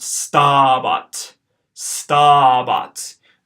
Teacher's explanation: it's got a long A in the first syllable, a short A in the second syllable, so this is going to be pronounced stabat, stabat.